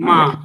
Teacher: ఘోషమే ఎందుకంటే వైబ్రేషన్ ఉంటుంది ఆల్రెడీ [గొంతు సవరించుకోవడం] మ అన్నప్పుడు వైబ్రేషన్ ఉంది చివరి అక్షరాలు అదే ఐదు వచనంలో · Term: ఘోష అనునాసికం